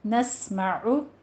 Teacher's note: सीन में सीटी की आवाज़ लेकर आनी है